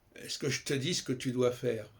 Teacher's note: Il y a très peu de A, très peu de O. On est dans un E qui n'est même pas une voyelle, qui est une sorte de liaison, de lien entre les consonnes.